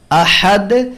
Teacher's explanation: আহাদ এখানেও হামজা শক্ত, দালে কলকলা।